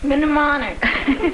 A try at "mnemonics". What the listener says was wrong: No, that's M-N. The M is silent.